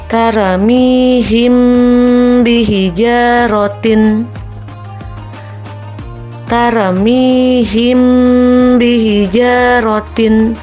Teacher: Jadi ikhfa syafawi itu apabila huruf mim bertemu dengan ba. Cara membacanya dengan suara yang samar antara mim dan ba. Kemudian ditahan kira-kira 2 harkat seraya mengeluarkan suara ikhfa.